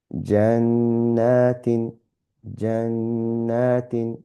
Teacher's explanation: We are reciting the noon with a slight nasal sound, and we're holding it slightly longer. And then with the alif, we're elongating the sound, the and then we have ta with in. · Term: ghunna